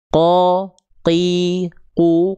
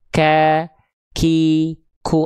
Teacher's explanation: huruf kaf itu dari segi nafas, perhatikan, dia punya sifat namanya terpercik nafas atau percikan nafas